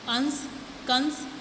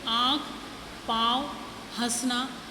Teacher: अनुस्वार के उच्चारण के रूप में वायु नाक से निकलती है, और जबकि अनुनासिक के उच्चारण के समय वायु नाक और मुंह दोनों से निकलती है। · यानी अनुस्वार का जब उच्चारण करते हैं शब्द का तो नाक से निकलती है आवाज़, यानी वायु जो हवा है, और अनुनासिक के जो उच्चारण जब करते हैं उस समय वायु नाक और मुंह दोनों से निकलती है, जैसे हंस और हंसना। और हंस, अंश, कंस आदि का उच्चारण करते समय वायु नाक से निकल रही है, जबकि आँख, पाँव, हंसना आदि का उच्चारण करते समय वायु नाक, मुख दोनों से निकल रही है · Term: अनुस्वार और अनुनासिक